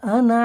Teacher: এই নুনটা টান হবে না। এই আনা শব্দ টান হয় না।